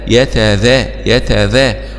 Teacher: ونخلي بالنا من مخرج الذال بنأكد عليه كثير، طرف اللسان مع أطراف الثنايا العليا